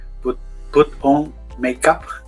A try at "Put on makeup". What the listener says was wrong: Put on makeup. Perfect.